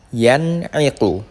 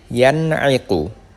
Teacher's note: Tidak boleh didengungkan, harus jelas.